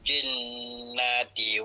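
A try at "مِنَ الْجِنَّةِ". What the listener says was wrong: Dekat nal yang awal tu pak cik jangan dengung nah. Satu harakat saja.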